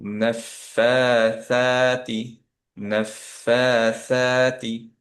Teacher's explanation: ফা হচ্ছে 2 কাউন্ট, সা হচ্ছে 2 কাউন্ট